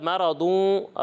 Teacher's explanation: آواز نہیں آئے گی ٹھیک ہے اور اس کے بعد مَرَضٌ را کو بھی پر پڑھنا ہے ضاد کو بھی پر پڑھنا ہے ٹھیک ہے یہاں پر بھی غنہ ہے اور اس کے آخر